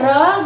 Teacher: र जो है जैसे बेलन की भांति लपेटे जाना, उसी तरह से जो है लुंठित ध्वनि का उच्चारण करते समय र जो है वो कंपकपी के साथ बोला जाता है।